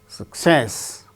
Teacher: success with stress on second syllable